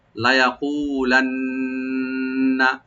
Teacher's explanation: নুন মুসাদ্দাদ এখানে ওয়াজিব গুণা একালে পরিমাণ গুণা করবেন, টান হবে না